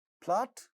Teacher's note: pa sound in plot also gets aspirated.